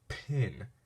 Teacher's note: when you say pin there's a short breath after the P sound